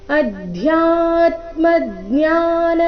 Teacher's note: ಅಧ್ಯ ಮಹಾಪ್ರಾಣ ಸ್ಪಷ್ಟವಾಗಿ ಬರಬೇಕು